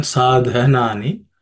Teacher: The second letter, dha, is an aspirated consonant